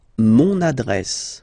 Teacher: you can hear now this little link, so you've got to pronounce this N